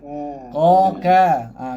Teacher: Okey, naik pula dah masuk dekat papan lidah. Pangkal papan lidah kena langit-langit lembut.